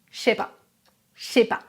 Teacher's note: Par exemple, je ne sais pas se prononce je sais pas, je sais pas. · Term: contractions